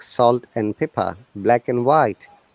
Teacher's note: if you find and in between two words, and should be always like n, not end.